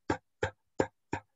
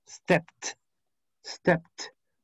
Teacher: Step es un verbo que finaliza en un sonido p, p, p, p. No vibra. Por lo tanto, su ED se pronuncia como una T igual.